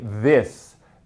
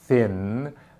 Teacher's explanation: your throat vibrates when you say this, but when you say thin, it doesn't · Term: interdental fricatives